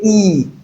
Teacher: When you say E, your lips are straight, so you can describe that sound as straight vowel sound.